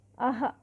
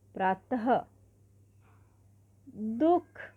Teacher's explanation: इसके उच्चारण में हमेशा ह अंत में लगता है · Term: विसर्ग